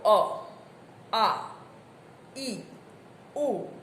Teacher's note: તમે અ બોલો, અ, આ, ઈ, ઉ, કોઈ જગ્યાએ હવા અવરોધાતી નથી, સીધી બહાર નીકળે છે.